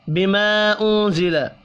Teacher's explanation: بما انزل یہاں بھی الف کے اوپر چھوٹی مد ہے، 3 الف کے برابر کھینچ کر پڑھیں گے۔ نون ساکن کے بعد زا ہے، اخفاء حقیقی ہوگا۔